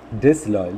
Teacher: Similarly, the L of loyal will also be stressed. So there are two stressed syllables here. Dis is also stressed. Loyal is also stressed.